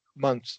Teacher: with months, you're just going to drop the th in the plural form